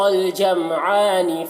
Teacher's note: عین میں کھڑا زبر ہے، 1 الف کے برابر کھینچ کر پڑھیں گے